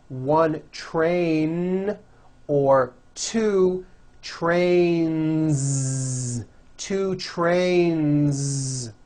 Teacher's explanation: Two trains with a voiced Z ending.